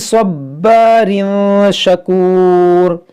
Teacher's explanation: یہاں صاد حروف مستعلیہ ہے, اس کو موٹا پڑھیں گے, اور با حروف قلقلہ ہے اور مشدد ہے تو خوب جماؤں کے ساتھ پڑھیں گے اس کو